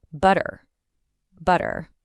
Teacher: The T just vanishes, and in its place is that little catch in the throat. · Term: glottal stop